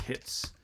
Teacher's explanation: here we have again a fricative after a stop um and that's not supposed to happen uh so we're going